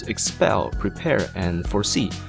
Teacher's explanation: all with two syllables and all with the stress on the second syllable